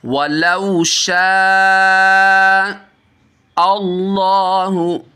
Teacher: مد متصل ہوگی۔ اللہ عز و جل کا لام ہے تو اس کو پر پڑھیں گے، موٹا کر کے پڑھیں گے، کیونکہ اللہ عز و جل کے لام سے پہلے زبر ہے